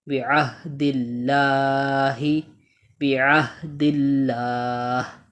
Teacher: اللہ کے لام سے پہلے زیر ہے تو اللہ کے لام کو ہم باریک پڑھیں گے